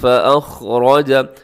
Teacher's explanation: خا موٹا ہے، را بھی موٹا ہے کیونکہ اس کے اوپر حرکت ہے